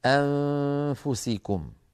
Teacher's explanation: نخفي النون عند السين في الإنسان أو عند الفاء نحو أنفسكم فلا نستعمل طرف اللسان، يعني لا نقرع بطرف اللسان مخرج النون فلا نظهرها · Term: إخفاء النون